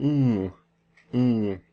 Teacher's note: well it's not going through our mouth so it's a nasal